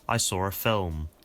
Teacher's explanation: That means that people sometimes add an R sound to a word that doesn't actually have one if it's followed by a vowel in the next word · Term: intrusive R